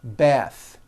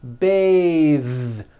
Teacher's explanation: Bath. But when you change it into a verb, to bathe, the vowel changes to an A sound and the TH is voiced.